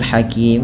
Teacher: Pada lafal mad arid disukun boleh memanjangkan 2 harakat, 4 atau 6, tapi kita mengambil yang tengah-tengah saja